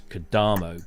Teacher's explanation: the emphasis is always on the penultimate syllable